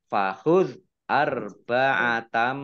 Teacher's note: zal sukun ya bukan kolkolah jangan dipantulkan. Fahuz arba'atam fathah tanwin bertemu dengan huruf mim, bacaan idgham bi gunnah masuk dengan mendengung, yaitu mendengung mim ditandai mimnya ada tasdidnya.